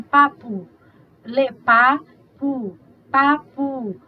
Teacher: esse U final, na posição átona final, junto com seu vizinho P, desvozeado, assumiu um posicionamento de desvozeamento